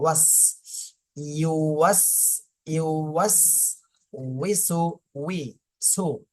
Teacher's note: প্রথমে ঠোঁট ছড়ানো থাকবে, এরপরে ইউ বলার সময় ঠোঁটটা গোল হয়ে যাবে, গোল হয়ে আবার ওয়াও একসঙ্গে পড়তে হবে, ওয়াস।